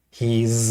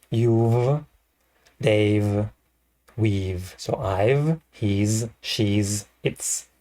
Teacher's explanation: he's with a z sound, she's with a z sound, it's with a s sound